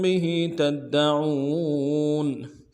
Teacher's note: کنتم به تدعون، به تدعون، با کو نون سے ادا کریں گے، ہا کے نیچے کھڑی زیر ہے، ایک مقدار میں کھینچیں گے۔ به تدعون، تا کو دال کے ساتھ ملانا ہے، دال کے اوپر تشدید زور دیں گے، اگلے دال کو نرم سے ادا کریں گے۔